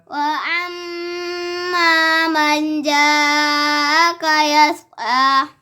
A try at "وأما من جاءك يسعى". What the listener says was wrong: एक तो आपने वो आम ऐन जैसे पढ़ी आवाज़ और दूसरा मन पे गुन्ना छोड़ा है तीसरा मद कंप्लीट नहीं की वह एम ऐसे पढ़ो नहीं एम ऐन बन जाती वह जी गुन्ना कर